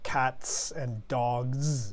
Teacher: Now, we're very familiar with this because we do this in English as well, putting an S or Z very commonly at the end. Of course, we write it with the S usually, but the pronunciation is often a Z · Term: S and Z